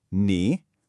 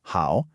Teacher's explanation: Both of these characters on their own are third tones. That's the tone that dips down and then rises back up.